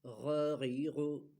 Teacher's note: غین زبر غ، غین زیر غی، غین پیش غو، غا غی غو۔ جیسے بلغم خارج کرتے وقت جیسے گلے پہ زور دیتا ہے اس طرح یہ غین ادا ہوتا ہے